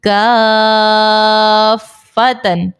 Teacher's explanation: اس مثال میں دیکھیں الف سے پہلے زبر ہے الف مدہ اور اس کے بعد فا کے اوپر سکون اصلی ہے مد لازم کا قاعدہ لگے گا 6 حرکات کی مقدار اس کو کھینچ کر ادا کریں گے